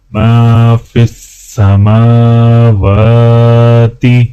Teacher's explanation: میم کو الف کے ساتھ ملاتے ہوئے ایک الف کے برابر کھینچا جائے گا